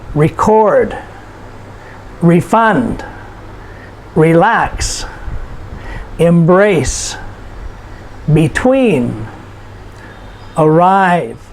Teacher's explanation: the emphasis or the stress is put on the last syllable